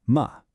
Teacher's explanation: No special pitch, no up, no down. It's just a little, light, unstressed puff of a sound, usually tacked on to the end of a word. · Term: neutral tone